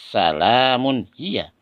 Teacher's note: Tanwin ini ya bertemu dengan ha, maka bacaannya harus terang.